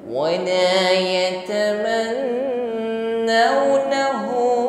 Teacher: Hu di sini kita panjangkan 2 alif, ya, atau 2 kali ayun kita ukur. Hu ada maksilah wawilah, ditandai dengan dhamma yang terbalik, ya.